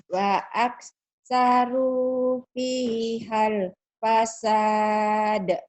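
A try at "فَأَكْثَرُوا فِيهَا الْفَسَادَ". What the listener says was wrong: Fa. Bukan, we ya. Fa aksaru fi hal fasad.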